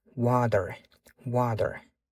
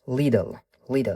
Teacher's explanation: qachonki mana bu T tovushimiz ikkita unli tovushni o'rtasida kelganda American accentda D talaffuz qilamiz. Bizdagi D tovushi emas, sal boshqacha, yumshoqroq aytilishi kerak bo'ladi D.